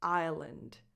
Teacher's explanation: The S in the word island is silent. Island. And the last vowel is a schwa.